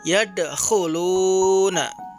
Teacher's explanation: Selanjutnya, contoh qalqalah sughra untuk huruf dal, di mana ketika huruf dal sukun di tengah kalimat, maka dibaca memantul